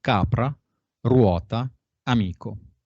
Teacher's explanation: Conservación de las sordas del latín.